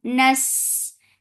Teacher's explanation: give rakhawa and safir, and it is light on sin.